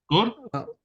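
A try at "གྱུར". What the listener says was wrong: Almost gyur. There is also the yatak keeps that y in between the ga and the u. So gyur, gyur. Good, almost gyur.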